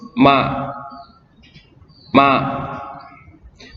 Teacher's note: terletak pada dua perut bibir bagian tengah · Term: huruf ma